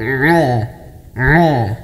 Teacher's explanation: Nah, tempatnya itu di jakun. Nah, itu agak disempitkan, agak ditekan. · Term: huruf ain